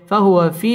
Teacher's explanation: জেরের বাম পাশে জজম ওয়ালা ইয়া, মদের হরফ এক আলিফ টেনে পড়তে হবে।